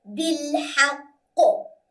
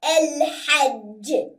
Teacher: we just delete the harakah and make it a stronger qalqala than usual because we're going to stop. So, bil-haqqi will turn into bil-haqq.